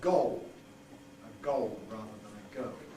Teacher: We've already touched on this because to some extent it's found in RP, but it's very general in London where you have O before L, and indeed it swallows the L because the L is vocalized